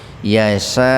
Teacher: nun mati ketemu ya secara terpisah jadi diidgamkan ke huruf ya dimasukkan ke ya dengan mendengung